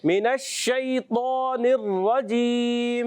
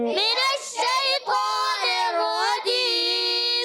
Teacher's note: شین میں منہ میں آواز پھیل جاتی ہے، منہ میں آواز پھیل کے اس کو کہتے ہیں صفت تفشی.